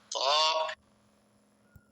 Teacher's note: ওদ, ত, এই হরফটি এক আলিফ পরিমাণ লম্বা হবে, জিহ্বার আগা উপরের দাঁতের গোড়ায় ভিতর দিয়া ধাক্কা দিয়ে মুখ খুলে দিবে।